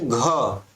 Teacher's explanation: घ, तो ऐसा लग रहा है कि आप ह बोल रहे हो, ठीक है। तो यहाँ पर वो कह रहा है कि जब आप दूसरा और चौथा व्यंजन का उच्चारण करते हो तो हकार की ध्वनि विशेष रूप से सुनाई देती है।